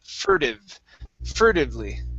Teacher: okay um next is the word furtively okay right here so our stress is at the very beginning let's switch this t to a flap t